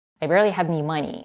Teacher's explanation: And what I think she's doing here, because she's so quick, she's actually dropping the first sound in any, which could become potentially a schwa, had any money, but she doesn't do it. I think she's completely dropping that first sound, and it becomes had any money.